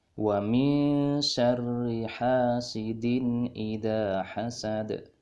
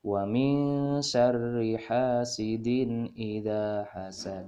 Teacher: huruf Dal kasrotain bertemu dengan Hamzah dibaca izhar halqi maka cara membacanya adalah jelas bukan mendengung